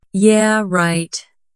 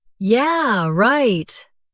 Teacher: said slowly and flat. It means disbelief. But yeah, right with energy and laughter means agreement.